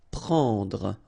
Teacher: It's what we call nasal, so it goes in your nose and it's en.